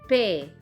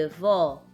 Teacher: É uma vogal que pronunciamos com a boca mais aberta, como E de pé ou O de avó. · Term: vogal aberta